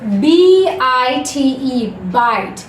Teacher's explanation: सो IGH, IY ये ऐसा sound है, ऐसा डिफ्थोंग साउंड है जिनका वाल साउंड यहाँ पे आई ही आता है, ना कि ई, ना कि या